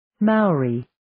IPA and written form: mɑːɔːriː (Maori)